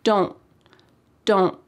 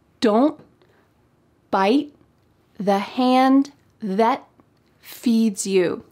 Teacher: In American English, oftentimes a T at the end of words will be cut off. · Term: stopped T